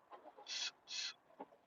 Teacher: So the t sound is transformed a little bit to ts, ts, ts. Okay, it's like a really tense S going on there, or like a TS.